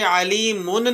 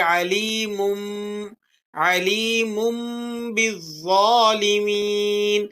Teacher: اب یہاں پر میم پر آپ کو تنوین لگا ہوا نظر آ رہا ہے، تو ہم نے قاعدے میں پڑھا تھا اقلاب کے کہ اگر نون ساکن ہو یا پھر تنوین ہو، تو تنوین کے بعد حرف با آ گیا، ہم یہاں تنوین کی آواز کو میم سے بدل کر پڑھیں گے